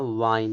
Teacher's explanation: डब्लू का वाह बोलते समय हमारे ओठ थोड़े बाहर निकलकर गोल होना चाहिए। जैसे आप किसी को चूमते चूमते हो, और वी वाह बोलते समय ऊपर के दांत नीचे के ओठ को स्पर्श करने चाहिए, इसलिए।